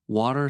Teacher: In American accent, T is not always strong. Sometimes it sounds like a soft D.